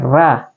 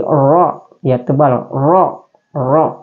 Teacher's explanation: tebal ro tanpa getar lidah itu tidak boleh bergetar